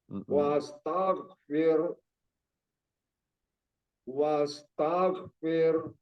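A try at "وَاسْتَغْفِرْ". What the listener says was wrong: Ya, intinya jangan memantul di ghin. Dia mengalir aja rokhawah tagh, tagh, tagh. Fasabbih, fasabbih bihamdi rabbika wastaghfir.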